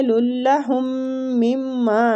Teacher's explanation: وہی یالین ہو رہا ہے، تھوڑا سا کھینچیں گے، للہم مما، میم مشدد ہے دونوں آگے میم میں، تو ہم دونوں میم پہ غنہ کریں گے ، ٹھیک۔ کتبت ایدیہم، ای تھوڑا کھینچنا ہے، دی کو تھوڑا